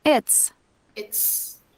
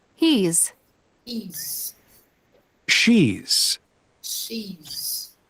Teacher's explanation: when we pronounce it's shorter. It's not long like he's, she's